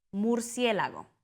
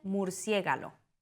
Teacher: Metátesis, cambia de lugar de los sonidos.